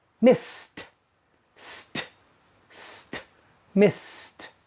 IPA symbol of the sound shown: t